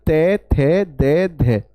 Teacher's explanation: जब मैं त थ दे ध बोलता हूं तो ऊपर के अगले दांतों पर जीव स्पर्श हो रही है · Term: दंत्य